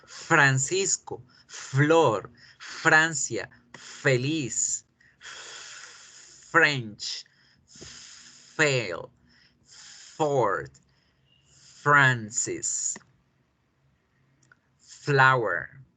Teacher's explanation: el aire va a pasar con facilidad por el tracto bucal, pero al estrellarse con los labios y los dientes, va a generar una fricción que va a crear el sonido. Sin vibración para la F y con vibración para la V.